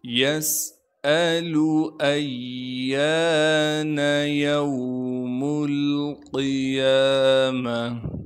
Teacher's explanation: یسألو ایان یوم القیامہ، یا کو واو ساکن سے ملائیں گے، میم کو لام ساکن سے ملانا ہے، میم لام پیش مل۔ قاف کو موٹا کر کے پڑھیں گے کیونکہ قاف موٹے حروف میں سے ہے۔ یا پر کڑا زبر ہونے کی وجہ سے یا کو ایک الف کی مقدار کھینچیں گے، میم کو بغیر کھینچے پڑھنا ہے، گول تا کو وقف کی حالت میں ہا بنا دیں گے۔